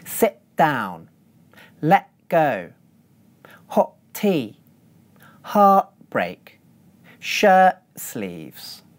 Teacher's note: we use a glottal stop when a syllable ends with a /t/ consonant